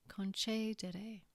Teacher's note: The accent, as we said, is on the antepenultimate syllable, so the word is pronounced concedere.